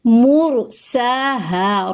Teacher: مرساہا، را پور ہے کیونکہ را ساکن سے پہلے پیش ہے، سین کے اوپر کھڑا زبر ہے، ایک الف کے برابر لمبا ہوگا، ہا کو ایک الف کے برابر لمبا کریں گے کیونکہ آگے الف مدہ ہو رہا ہے